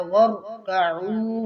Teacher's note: را کو موٹا کریں گے اور آگے عین کو واضح کریں گے